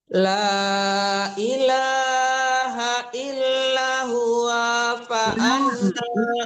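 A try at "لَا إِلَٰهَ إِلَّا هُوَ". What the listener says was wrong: Ibu enggak bisa membedakan lanya panjang. Yang enggak panjang tuh huanya gitu ya.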